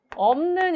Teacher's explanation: 비읍, 시옷 중에서 비읍만 발음이 됩니다. 자음군 단순화가 일어나는데 문제는 비읍하고 니은이 만나잖아요.